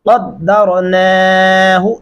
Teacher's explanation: नून के ऊपर खड़ी ज़बर है, हम आवाज को लंबा करेंगे, रा को लंबा नहीं कर सकते।